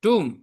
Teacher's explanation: >> The correct pronunciation is tomb. B is silent and O is pronounced U here